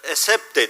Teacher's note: Sad kalın sat harfi yerine ince s ile söylüyor yani esap de yerine esep de diyor şimdi bu bir işte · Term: Mahreç hatası